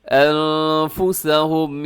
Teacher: یہاں نون ساکن کے بعد فا ہے، یہاں بھی آپ نے اخفا کرنا ہے